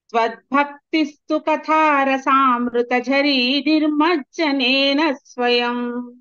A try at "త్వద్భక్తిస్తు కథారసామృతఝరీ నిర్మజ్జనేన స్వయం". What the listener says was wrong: మామూలుగానే చెప్పారు. ఆ నిర్మజ్జనంలో కూడా చూడండి, నేను 2 పలుకుతాను. నిర్మజ్జనేన, నిర్మజ్జనేన. ఆ రెంటికి భేదం ఉంది కాబట్టి ఆ రేఫతో కలిసినటువంటి మకారము తర్వాత చ జ ఞ తర్వాత జకారం ఇవన్నీ కలిసి ఒక ప్రౌఢంగా పట్టుగా చదవాల్సి వస్తుంది.